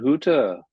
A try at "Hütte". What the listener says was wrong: Be careful with the umlaut. That's your tongue forward. Hütte.